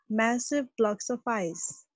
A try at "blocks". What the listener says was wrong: massive blocks, blocks ko bhi thoda sa lamba karke bole na, blocks,